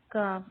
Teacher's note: زبان کی جڑ یعنی کوا، یہاں سے 2 حروف ادا ہوتے ہیں، اسے کہتے ہیں لہاتیہ، یہاں سے قاف ادا ہوتا ہے، یعنی زبان کی جڑ جب نرم تالو سے لگے تو یہاں سے قاف ادا ہوتا ہے اور اس سے تھوڑا ذرا سا آگے ہٹ کر جب زبان اوپر تالو کے سخت حصے سے لگے تو یہاں سے کاف ادا ہوتا ہے، کاف۔ اس میں فرق رکھنا ہے آپ کو آواز میں، کاف کاف نہیں کہنا، اس کو کہنا ہے قاف اور کاف۔